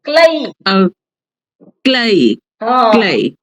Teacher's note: ક્લે નથી ક્લય છે ક્લય બે માત્ર છે